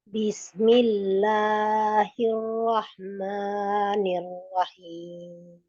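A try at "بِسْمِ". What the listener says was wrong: Bis, sinnya dilepas dulu. Bis. Oh, sin di mana Ibu makhrajnya? Tadi Ibu kayak tak bis di bawah aja. Jadi dia di belakang. Sebenarnya letaknya dia itu di antara gigi seri atas dan bawah, tapi dia lebih ke bawah. Bis.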